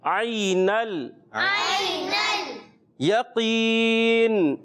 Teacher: क़ाफ उर्फ़ मुस्तालिया में से मोटा होगा, चाहे वो ज़बर हो, ज़ेर हो, पेश हो।